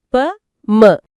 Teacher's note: மேல் இதழும் கீழ் இதழும் பொருந்துவதால் பிறக்கும் எழுத்துக்கள்